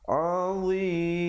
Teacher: Kemudian di situ hukumnya izhar syafawi, bunyi saja kum terus masuk azim. Dan ditutupkan mulut yang rapat untuk menyempurnakan waqaf pada hukum mim